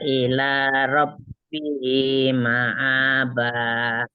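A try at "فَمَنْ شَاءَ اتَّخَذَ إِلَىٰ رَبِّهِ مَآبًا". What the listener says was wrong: Ulang lagi, za-nya jangan panjang. Faman syaa'a attakhadha ila langsung.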